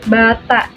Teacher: Oke, selanjutnya yang terakhir ada bunyi rendah, yaitu bunyi yang dihasilkan dengan cara posisi lidah merendah sehingga menjauh dari langit-langit keras